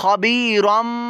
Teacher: हम तनवीन को मीम से बदल देंगे, यहाँ रन की बजाय रम की आवाज़ आएगी मीम के अंदर। खबीरम। बा पर हरकत है और स्वाद या ज़ेर सी, ये या साकिन से पहले देखें स्वाद के नीचे ज़ेर है तो ये या मद्दा बन गया और इसको लंबा कीजिए। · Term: इकलाब